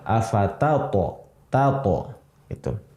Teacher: Jadi si ta dibaca ta, to juga dibaca sukun dengan qalqalah.